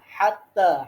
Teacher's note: হা গলার মাঝখানে হাত্তা তাতে এক আলিফটা আনতে হবে